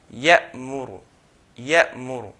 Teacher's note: between the hamza and the next letter, the meem, if you notice, there's a gap.